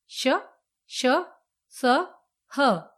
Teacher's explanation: इनके उच्चारण में वायु घर्षण के साथ यानी ऊष्मा उत्पन्न करती हुई निकलती है, अतः इन्हें ऊष्म व्यंजन कहते हैं।